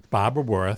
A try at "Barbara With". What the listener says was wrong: Barbara With. You said Barbara Worth. Could be your accent.